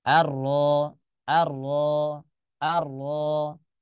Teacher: tidak ada dengungnya tidak ada ghunahnya · Tapi dia jelas Ya, jelas bacanya keluarnya hanya dari mulut. Arro, arro, arro. Tidak ada dengungnya, tidak ada gunnahnya ya.